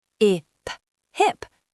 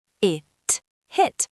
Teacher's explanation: h is a quiet, breathy sound. We felt the warm air on our hands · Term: huffing h sound